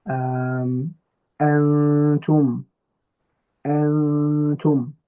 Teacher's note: we hide the tongue component of the noon, okay, and we show the we show just the ghunna part of it for 2 harakat, okay. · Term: ikhfa